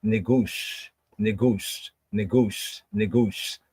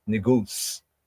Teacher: It's like a slur that makes the S sound more like a sh